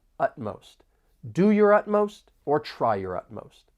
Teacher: there are two syllables and the stress is on that first syllable.